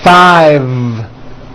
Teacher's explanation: I said 5 with a voiced V.